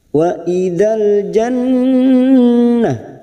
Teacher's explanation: Nun yang bertasdid ini juga yang disebut gunna musaddadah tiga harakat kita dengungkan dan ditahan